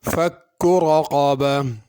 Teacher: فک رقبہ، فکو کے اندر کاف باریک ہے، اس کو بڑا قاف نہیں پڑھنا، چھوٹا کاف پڑھنا۔ اور رقبہ کے اندر را کو بھی پر کرنا ہے اور قاف بھی بڑا ہے، اس کو پر کرنا ہے۔ اگر اس آیت پہ رکیں گے تو رقبہ پڑھیں گے، اگر ملا کے پڑھیں گے تو پھر تا پڑھی جائے گی۔